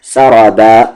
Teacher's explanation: را کو ہیوی کر کے پڑھیں گے کیونکہ اس کی آواز اوپر ہے